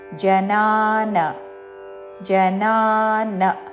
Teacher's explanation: జనా ఇక్కడ నా దీర్ఘము తరువాతి నా హ్రస్వము